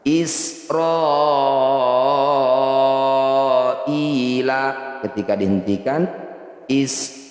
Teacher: Cara bacanya i, kita panjangkan 6 harokat, huruf terakhir sukunkan. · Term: mad arid lis sukun